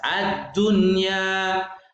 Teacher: Ad-dunya ini ada nun mati bertemu dengan ya di dalam satu kata, maka tidak boleh dibaca dengung, tapi harus jelas.